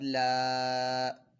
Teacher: پہلے تو یہ لام جو ہے یہ اس میں جلالت کا لام نہیں ہے، تو ہم نے اس لام کو باریک پڑھنا ہے، اور اس لام کے اوپر کھڑا زبر ہے تو اس کو ایک الف 2 حرکات کے برابر کھینچ کر بھی پڑھنا ہے۔